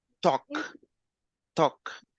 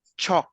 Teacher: we don't pronounce the letter L